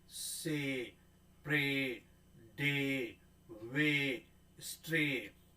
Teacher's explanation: फिर sorry it's ए और ई, ए और ई, से, मतलब कौन सा ए है, छोटा ए है, और उसके साथ क्या जुड़ा हुआ है, ई जुड़ा हुआ है